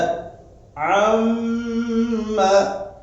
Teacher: நம்முடைய சப்தத்தை மூக்கந்தண்டில் கொண்டு போய் ஒரு அலிஃப் நீட்னா இதுக்கு தான் ஒன்னான்னு சொல்றது. இந்த ஒன்னா என்ற இந்த தன்மை இந்த கைஷூம் என்ற மூக்கந்தண்டிலிருந்து வெளியாகின்றது.